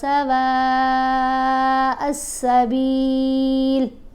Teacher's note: واو کو ہم نے 5 الف جتنا لمبا پڑھنا ہے